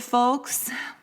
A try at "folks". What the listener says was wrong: You really pronounced the hard L in that.